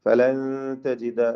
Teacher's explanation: സാക്കിന നൂൻ ഇഖ്ഫാ ഹഖീഖി മറച്ച് മണിച്ചോതുക